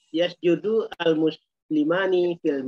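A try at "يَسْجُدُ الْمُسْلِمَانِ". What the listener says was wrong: Jangan begitu bacanya, disambung.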